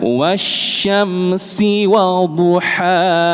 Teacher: Maka bukan wasyamsi wadduha, tapi wasyamsi wadduhaha. Sinya pendek, langsung ke wawu selanjutnya.